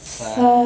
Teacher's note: Huruf sa, tempat keluarnya ujung lidah menempel di gigi seri atas.